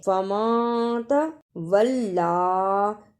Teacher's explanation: نون ساکن کو تھوڑی دیر ناک میں چھپانا ہے. فما تولا، اسے ولی نہیں پڑھنا، لام پر شد اور کھڑی زبر ہے، اس کو صحیح ادا کرنا. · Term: اخفا